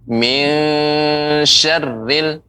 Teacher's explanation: nun mati bertemu dengan shin, itu ikhfa. Jadi harus samar.